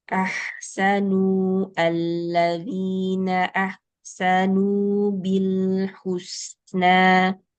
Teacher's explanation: di ahsanu ini bagus rakhawahnya suara huruf hannya mengalir